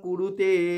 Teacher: কুরু একসাথে বলছি কিন্তু তেটাকে আবার টেনে নিচ্ছি।